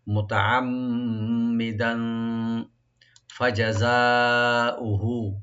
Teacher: মুমিনাম মুতাআম্মিদান, মুতা তা ওপেন রাখবেন, আইনটাকে রাইট দিবেন, মাঝখানে যে মি মুসাদ্দাদ আছে এখানে গুণা করে একটু মি বলবেন, মুতাআম্মি দান, এখানে দান তালের উপর যে তানবিন আছে দুই জবর, এখানে আমরা ইখফা করব, লাইট গুণা করব, মুতাআম্মিদান ফাজাযাউহু, ফাজাযা, এখানে তিনটা শব্দ অক্ষর, এটা ওপেন করে পড়তে হবে, তবে জিম এবং জা যেন স্পষ্ট হয় মাখরাজের ক্ষেত্রে।